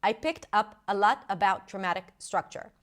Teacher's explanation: Feels very staccato, right? feels like, you know, like every word is stressed